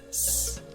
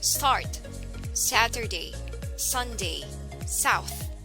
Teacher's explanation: It is made by forcing air between the tongue and the roof of the mouth and out past the teeth.